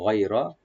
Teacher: গয় এখানে গয়টাকে ডিপ করে লিন করবো একটু, গয় রাটাকে ডিপ করে পড়বো